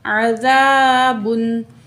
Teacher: زال میں نرمی کریں گے، الف سے پہلے زبر ہے، 2 کاؤنٹ کھینچ کے پڑھیں گے، الف مد ہے، با دو پیش بن، عذابن.